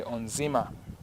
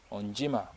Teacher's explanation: if it has N before it, then it is no longer pronounced as NZ. It's pronounced as NJ.